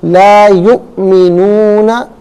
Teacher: हमज़ा साकिन है, इसको झटके के साथ पढ़ेंगे